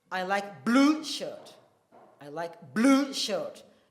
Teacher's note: blue there is the loudest of all the words. So, meaning I like blue shirt, not green shirt or yellow, but blue shirt. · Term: emphatically stressed